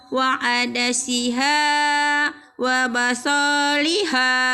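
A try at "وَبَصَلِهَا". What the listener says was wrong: Salah, soalnya pendek. Wa basoliha. Soalnya nggak ada yang manjangin. Ya. Soalnya nggak ada yang manjangin.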